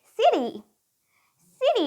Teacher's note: attack sound but we would use the D sound and remember it's not a very hard D like da da but it's a very light and soft D and sometimes it almost sounds like R · T becomes a d when the t is between two vowel sounds alright guys which we also call a flap t